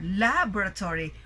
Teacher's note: So, when we say laboratory, the stress is in the first syllable. So our voice will be rising in that particular syllable. And you notice that the volume of our voice is also louder, laboratory, while the rest of the syllables, you don't really give emphasis on them.